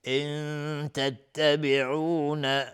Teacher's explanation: نون ساکن بعدش تای 2 نقطه اخفای حقیقی